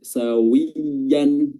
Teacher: huruf wa-nya ini harus betul-betul dimonyongkan dan dia kasrah, ditarik langsung kiri kanan